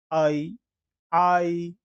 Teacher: आ से लेकर जब हम ई तक जाते हैं तो हमें जो स्वर प्राप्त होता है वो है आई